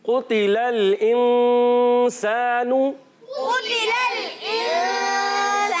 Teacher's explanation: قاف حرف مستعلیہ میں سے موٹے حروف میں سے موٹا کر کے ادا کریں گے, تا کو باریک رکھ دیں گے